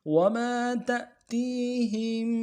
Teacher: الف مدہ ہے، ایک الف دال کھینچیں گے، وما تأتيهم، تأتيهم، تا کو حمزہ کے ساتھ ملانا ہے، حمزہ ساکن ہے، جھٹکا دیں گے